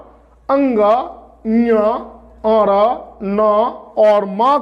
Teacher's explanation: और अंग, ञ, और न और म का उच्चारण स्थल नासिका है, इसको नाक से बोला जाता है